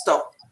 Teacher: And I probably swallow my P, so it's stop.